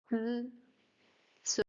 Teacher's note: The sound of the E when it follows ts. When it follows ts, the E becomes voiceless, so it's almost unpronounced. Ts, E becomes ts, ts, so you can't hear the E sound.